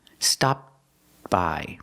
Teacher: When people link the words, sometimes you don't really hear the T, but it's there. It's a stop T. Stop by. Put the tongue up.